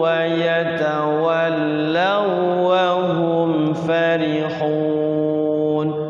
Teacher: Wau ketemu wau, iya ketemu iya, sama itu. Jadi dia hanya masuk saja, tidak ada gunahnya. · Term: idgham mutamatsilain